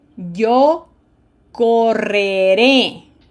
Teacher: we have two new um sounds, okay? The rolled r and the flutter r one right after the other.